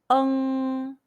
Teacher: first pronounce the mandarin chinese uh sound like the uh uh used to express hesitation in english then combine the o sound with the nasal n sound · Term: final on